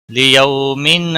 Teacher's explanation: واولین ہے تھوڑا نرمی کے ساتھ کھینچ کر ادا کریں گے